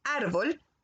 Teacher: la palabra se marca en la a de la primera sílaba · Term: acento